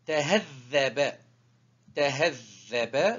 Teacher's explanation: Et on double la troisième lettre ici, elle se prononce double, 2 fois. Toujours, c'est la troisième lettre qui est prononcée double. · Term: shedd